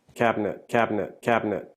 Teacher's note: It's a 3-syllable word, but many Americans drop the middle syllable.